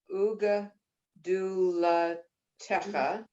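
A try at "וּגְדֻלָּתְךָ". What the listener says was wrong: You added a vowel that's not there. Ugdulatcha. There's no et in that.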